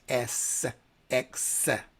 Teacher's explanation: your S and X are whistling fricatives that are pronounced also from the front of the lips.